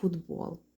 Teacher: Т глухий стоїть перед дзвінкими буквами і у вимові ми замінюємо її на дзвінку д тобто дзвінки приголосні оскільки вони є умовно сильнішими домінують над глухими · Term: одзвінчення